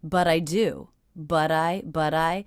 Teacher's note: I'm hearing that as a flap T or addy sound